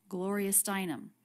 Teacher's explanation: A little bit of stress on the stressed syllable of Gloria, but then more stress on the stressed syllable Steinem.